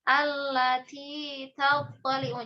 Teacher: karena huruf ta ini memiliki salah satunya hamas ya, maka harus dihamaskan